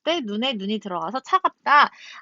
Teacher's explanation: 앞에 사람의 신체의 눈은 짧게 발음하고 뒤에 하늘에서 내리는 이 눈은 길게 발음을 합니다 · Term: 소리의 길이